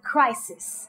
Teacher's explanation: Make sure that you aspirate for the k sound.